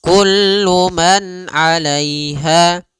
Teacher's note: pada lafal ha ada mad tabi'i, panjangnya 2 harokat, yaitu fathah bertemu alif